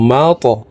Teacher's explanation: ত কলকলার হরফ উপরের দিকে ধাবিত করে ধাক্কা দিয়ে উচ্চারণ করব